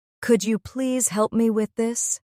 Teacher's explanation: There's a gentle rise in my voice on please and a soft drop at the end.